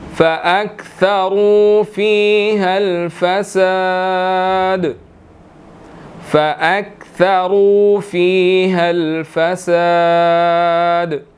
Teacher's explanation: را اس کے اندر موٹا ہے، موٹا ادا کریں گے